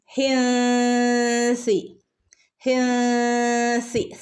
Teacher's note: സി കാറ്റ് പോകുന്ന രൂപത്തിൽ വേണം സനെ ഉച്ചരിക്കാനായിട്ട്. · ഹിൻസി നൂൻ്റെ മുകളിൽ സുക്കൂന് കാണുന്നില്ല അല്ലേ. നമ്മളവിടെ എന്ത് ചെയ്യണം, മറച്ച് മണിച്ചോദണം